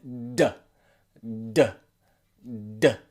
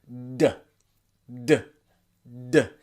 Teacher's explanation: Imagine that there is air that you want to get out of your mouth, but your tongue is stopping that air and you're building pressure and then you release. With the D sound that we're looking at today, you use your vocal cords